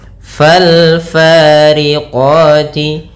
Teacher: alif lam qamariyah, yaitu alif dan lamnya ditulis dan dibaca dengan jelas suara lamnya